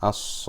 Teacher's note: So normally that is 2 harakat, but is followed by a Mushaddada letter, is followed by a Shadda. So instead of being stretched for 2 harakat, we stretch it for 6.